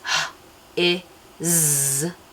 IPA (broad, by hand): h i z